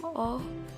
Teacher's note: Vokal belakang, sedang, bundar